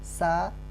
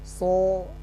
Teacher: Sin itu sifatnya istifal dan so sifatnya isti'la. Jadi sin tipis, so tebel. Nah, kalau kita tidak berikan sifatnya, maka kita tidak akan bisa membedakan antara sin dan so.